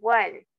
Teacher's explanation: este O no es pronunciada como O, sino es que es pronunciada como una W algo corrida